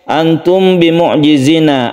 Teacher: makhraj dari mim itu adalah di syafawi untuk Ikhfa Syafawi ini kalau sempurnanya itu tidak terlalu mingkem ya karena kita mau membaca huruf ba tersebut